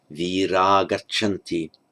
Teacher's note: G, voiced consonant, so the visarga drops. Virah gachanti.